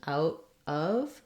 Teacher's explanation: we have the ow diphthong that sound and then the uh for of